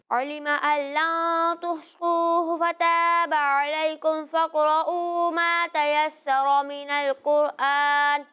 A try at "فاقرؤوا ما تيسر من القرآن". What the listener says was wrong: دیکھیں میں نے پہلے بھی بتایا تھا کہ یہاں را کو پر پڑھیں گے لیکن سین کو باریک پڑھیں گے، ٹھیک ہے، تیسرا نہیں، ٹھیک ہے، تیسرا، سین کو باریک پڑھنا ہے، را کو پر پڑھنا ہے، باقی یہاں فقرؤ آواز بالکل واضح ہونی چاہیے، ایک حرف دوسرے حرف کے ساتھ ملنا نہیں چاہیے، ٹھیک ہے، قاف کاف نہیں لگنا چاہیے اور را کو بھی یہاں پر پر پڑھنا ہے،